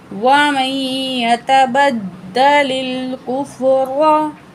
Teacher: दाल तशदीद है, सख्ती से पढ़ेंगे, भारी पन आएगा। व मई यता बदलिल कुफ्र, लाम की ज़ेर को लाम से मिला के पढ़ेंगे।